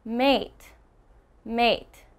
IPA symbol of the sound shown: eɪ